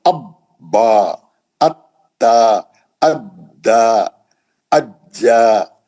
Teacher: तजदीद पढ़ने में सख्ती होती है क्योंकि 2 हर्फ पढ़ने होते हैं, है ना, एक सुकून से, एक हरकत से।